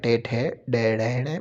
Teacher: मूर्धन्य व्यंजन कहलाते हैं जो तालुक के आगे के भाग से बोले जाते हैं।